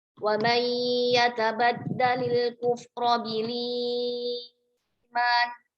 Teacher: Kemudian mat badalnya dibaca dengan 4 harokat.